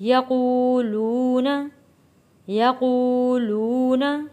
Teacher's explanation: حروف مدہ ہے اس لیے ہم ایک الف کے برابر کھینچ کر پڑھ رہے ہیں